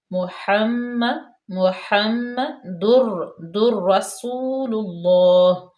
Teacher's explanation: ادغام کا قاعدہ لاگو ہو رہا ہے، تنوین کے بعد را آ گیا یرملون میں سے، ادغام میں سے بلا غنہ